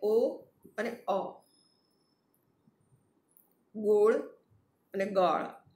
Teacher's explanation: એ અને એ વિવૃત પહોળો ઉચ્ચાર છે. જીભના પાછલા ભાગથી ઉ, ઓ અને વિવૃત અ એનું ઉચ્ચારણ થાય છે. બંને સાથે બોલીએ, ઓ અને અ.